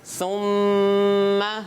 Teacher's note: ثم جب سا میم کی طرف آئے گا تو اپنی پیش والی حرکت رہے گی, ہونٹ بھی آگے ہوں گے. جب میم کی طرف آ کے جب سا کی بات ختم ہو جائے گی تو جب میم کی طرف آ جائے گا تو پھر ہونٹ پیچھے ہو جائیں گے.